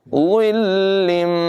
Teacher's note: बग़ैर सीटी के इसको पढ़ेंगे, ज़िल्लिन नहीं पढ़ेंगे बल्कि ज़िल्लिम